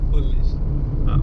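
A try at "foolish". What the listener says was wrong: फुलिश नहीं है, फूलिश है, क्योंकि डबल ओ लगा हुआ। अगर यू लगा होता तो फुल होता है, मतलब जल्दी बोलते हैं उसे।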